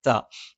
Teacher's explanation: നാവിന്റെ അറ്റം മേലെ മുൻപല്ലിന്റെ മുരട്ടിൽ